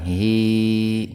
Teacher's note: Huruf H didahului kasroh. Jadi hi-nya dibaca panjang dua ketukan